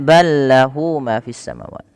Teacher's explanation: Di sini ada idgham mutamatsilain yang di mana ada huruf lam bertemu dengan huruf lam. Maka huruf lam yang pertama dimasukkan. Idgham artinya memasukkan, mutamatsilain itu mirip dari segi makhraj dan sifatnya sama, masuk.